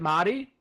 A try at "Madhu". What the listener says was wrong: It's Madhu. Madhu with an H. Madhu,